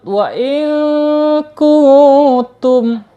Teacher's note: Ya, kita ingat ya, ketika ada nun sukun atau tanwin menghadapi huruf kaf, ya, ini harus dibaca ikhfa ya. Ikhfa harus dibaca samar ya. Ditahan dulu 2 harokat.